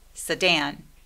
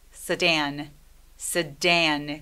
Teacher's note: 세단은 강세가 두 번째 음절에 와요.